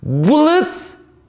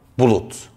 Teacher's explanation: dar ünlünün komşu hecedeki yuvarlak ünlü etkisiyle yuvarlaklaşması vardır